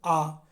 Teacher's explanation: आ बोलने से आपका तालु जीभ पीछे स्पर्श किया लेकिन आगे पूरा खुला रह गया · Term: विपरीत